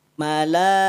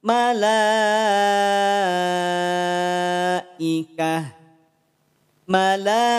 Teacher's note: Mad wajib muttasil. Ya, 5 harokat. Muqaddamnya sebetulnya 4 harokat, maksimal di 5 harokat.